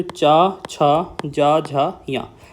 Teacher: जीभ का मध्य भाग मतलब बीच वाला भाग हमारे तालु को स्पर्श करता है। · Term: तालव्य व्यंजन